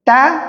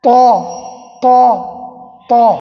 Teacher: তা এটার মাখরাজ এবং এটার মাখরাজও সেম কিন্তু সিফাতের তারতম্যের কারণে তা এটা পাতলা হবে উচ্চারণে পাতলা হবে কিন্তু শক্ত হবে আর ত ত ত এটা মোটা হবে